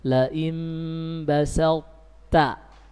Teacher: tapi tidak diqalqalah, hilang sifat qalqalanya karena akan kita lebur pada ta setelahnya. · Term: idgham mutajanisain